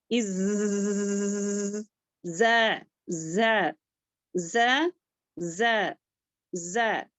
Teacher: ز میں جو ہے بزنگ ساؤنڈ آئے گی